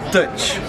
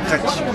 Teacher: Slender T. It's got a little ch to it.